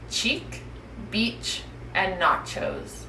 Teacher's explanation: this sound is a quiet sound which means your voice is off you should feel no buzzing in your throat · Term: CH sound